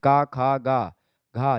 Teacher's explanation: ये सब कंठ ध्वनियां हैं